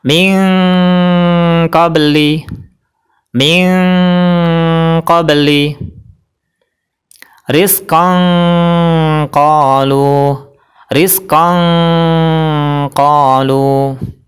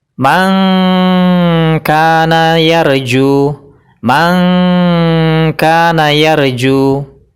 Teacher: Jadi cara bacanya nun mati dan tanwin ketemu huruf ikhfa ab'ad, yaitu kaf dan qaf. Nun matinya dibaca dengan mendekati huruf NG. Tanwinnya cara bacanya juga mendekati huruf NG.